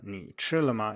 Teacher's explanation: in this sentence, 你吃了吗, ni is just a low tone. 你吃了吗, it isn't a dipping tone at all.